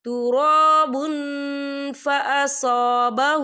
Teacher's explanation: دیکھیں تراب با کے پر تنوین ہے اور تنوین کے بعد جو ہے فا آ رہا ہے، اور فا جو ہے اکفا کا ورڈ ہے، تو ہم یہاں اکفا کریں گے، تنوین کی آواز کو ناک میں چھپائیں گے.